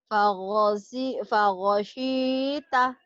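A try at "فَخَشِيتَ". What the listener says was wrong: Bukan go, tapi kho, ini khoir, khoir, khoir. kho-nya ini ya. Khoir, khoir, khoir, khoir, khoir, khoir. Bukan go. Kho. Fakho.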